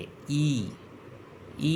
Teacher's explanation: ऊपर फिर नीचे तो उसे अग्र स्वर कहते हैं जैसे ई ई में आप देखेंगे आपकी जिवा ऊपर जा रही है